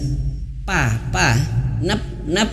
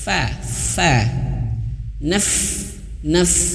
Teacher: Tapi yang benar bibir bawah menyentuh gigi seri atas. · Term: huruf fa